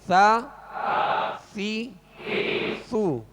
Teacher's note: ثا کو نرمی کے ساتھ باریک پڑھیں گے